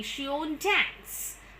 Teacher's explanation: Like normally if I do not put the full stop mark here and I put a question mark, then it becomes a rising tone. But if I put she won't dance with a full stop, I need to tell it with the falling tone.